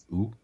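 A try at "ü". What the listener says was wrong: No, let's make a U. No, you said a double O sound. shorter. U.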